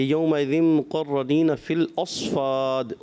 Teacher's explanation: صاد کی ادائیگی صفت استعلاء کے ساتھ ساتھ صفت اطباق کا بھی خاص خیال رکھنا ہے